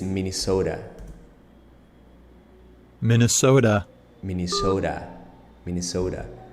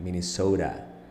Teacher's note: Look at the T. It's pronounced not like a T, more like a D, like Minnesota. It's the flat T.